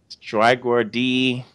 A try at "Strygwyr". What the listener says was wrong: Strygwyr. Just Strygwyr. Strygwyr. We leave out the D. It's a silent D.